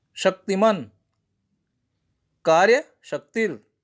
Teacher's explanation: ये तालव्य सा में है, जिसमें हमारा तालु पे जाता है। जो जीभ का अग्रभाग है वो कहाँ जाता है? तालु पे जाता है। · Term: तालव्य श